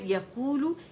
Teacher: اور پھر ہے یقولو، یا پہ زبر ہے، قو واو مدہ 2 کاؤنٹ کے لیے آواز کھینچیں گے. لو 1 کاؤنٹ کے لیے لام کے مخرج پہ جا کے دیکھیں گولائی دیں گے جا کے.